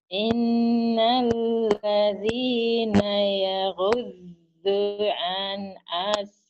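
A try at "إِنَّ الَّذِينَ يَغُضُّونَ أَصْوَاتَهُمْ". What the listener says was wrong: Nanya hilang, Bu. Nanya hilang. Yaghudduna ah ibu ini ah.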